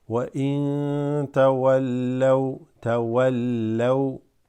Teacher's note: Noon sakina followed by ta, that is ikhfa.